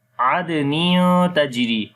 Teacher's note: Adnin on the dal we make qalqala.